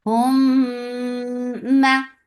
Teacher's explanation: Hum for dhamma, circle your lips, attach with meme. This meme, there is idgham shafawi, so you're keeping the sound in your nose for a longer time. This is gunna akmal.